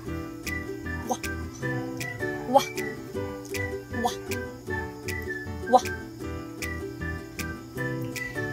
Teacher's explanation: Ang letrang W naman ay isa ring glide na may tunog sa puntong velar.